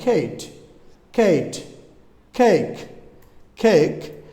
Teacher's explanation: জিব্বার নরম তালুতে এটা উচ্চারণ করতে হবে